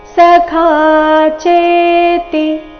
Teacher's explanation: ಭಕ್ತೋಸಿ ಮೇ ಸಖಾ ಚೇತಿ. ಸಖಾ ಚೇತಿ ಚೇ ದೀರ್ಘ, ಚರಣದ ಕೊನೆಗೆ ತಿ ರಸ್ವ ಇದೆ.